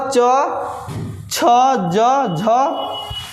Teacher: च वर्ग का उच्चारण स्थान जो है तालू है